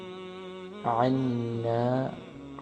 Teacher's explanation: عین کا مخرج گلے سے، عین کو گلے سے ادا کریں گے مڈل سے